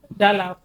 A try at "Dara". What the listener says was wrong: She called you Dala. She called you Dala. So that's the Igbo accent. You know, she has that. But you've been doing that R and L.